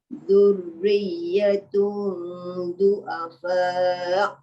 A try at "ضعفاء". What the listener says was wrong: ضعفاء jangan du'afa nanti dia jadi ain bujung ضعفاء ya